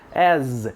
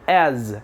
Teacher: o A e o S, que a gente pronuncia como se tivesse um sonzinho de Z no final